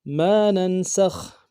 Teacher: میم کے بعد الف مدہ ہے، ایک مقدار میں کھینچیں گے، نون کو نون کے ساتھ ملانا ہے، نون ساکن غنہ کریں گے، سین کو خا کے ساتھ ملانا ہے، خا کو موٹا کریں گے۔